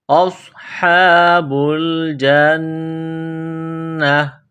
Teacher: نون مشدد ہے، آواز ناک میں چھپائیں گے، غنہ کریں گے۔ اولئک اصحاب الجنہ ہم فیہا خالدون، ہم فیہا خالدون، خا کو موٹا کرنا ہے، ایک الف کی لمٹ میں کھینچنا ہے۔ · صاد میں سیٹی کی آواز پیدا کرنی ہے، صاد کو موٹا کرنا ہے۔ اصحاب الجنہ، نون مشدد ہے، آواز ناک میں چھپائیں گے، غنہ کریں گے۔